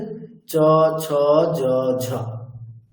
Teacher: plate আছে আমাদের মানে উপরের যে অংশটা একেবারে উপরের যে প্লেট মুখের উপরের যে প্লেট সেখানকার দেখুন মাঝখানের অংশে স্পর্শ করছে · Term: তালু